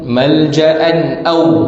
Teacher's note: Law yajiduna malja'an aw, hukum izhar halqi, tanwin bertemu dengan hamzah, tak ada dengung